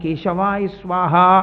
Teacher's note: కే అన్న దాంట్లో కా కా పలకాలంటే ఎక్కడ పలకాలి? కంఠం దగ్గర పలకాలి. కా కా అంటే ఇక్కడ పలకాలి.